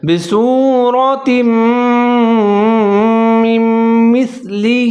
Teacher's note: اب نون ساکن ہے، میم پھر مشدد ہے تو میم اور دونوں میم کو ساتھ میں ملا کے پڑھیں گے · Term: ادغام